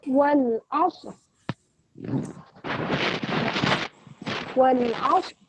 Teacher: Huruf lamnya jangan sampai terpantulkan karena bukan huruf qalqalah ya. Jadi wal ditahan, wal masuk ke ain, kemudian huruf sod, aus, aus, wal aus, kemudian ada huruf ro.